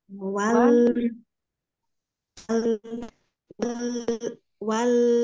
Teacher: lam itu ujung lidah di bagian depan bertemu dengan gigi gusi atas